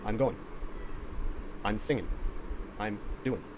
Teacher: sometimes we delete the g sound at the end of a verb